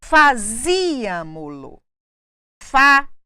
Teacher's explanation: Última, penúltima, antepenúltima, pré-antepenúltima. Nós temos aqui o acento na pré-antepenúltima por considerarmos o pronome oblíquo como última sílaba. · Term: bisesdrúxula